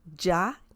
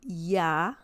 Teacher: some Spanish speakers say ya, like saying like a J, Y-A, ya. Some people say ya, okay, like a Y sound in English. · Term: the Y sound